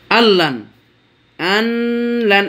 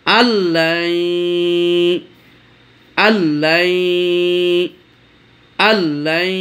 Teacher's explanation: ইদগাম হচ্ছে কিন্তু গুন্না হয় না। আল্লান, আনলান এরকম করলেও ভুল হবে পড়া, আর আল্লান এরকম করলেও ভুল হবে পড়া।